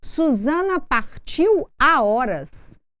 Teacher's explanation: nós não fazemos uma ligação sonora nem com a palavra anterior nem com a posterior